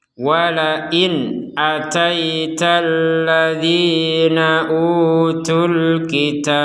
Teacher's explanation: Karena kita menggabungkan tu di sini, utunya. Bagian tu-nya tu kita gabungkan dengan alif lam di kata Alkitab. Maka tidak panjang sudah. Jadi panjangnya hilang.